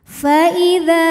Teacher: Fa idza dza ini hukumnya adalah mad tabi'i dhahiri. Sebab ada huruf alif yang sebelumnya didahului baris fathah. Maka huruf dzal kita panjangkan 2 harokat saja.